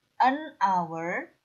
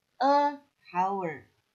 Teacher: Kita melihat huruf H sebagai konsonan, tapi kita mendengar bunyi O, jadi ini harus diucapkan an hour dan bukan a hour.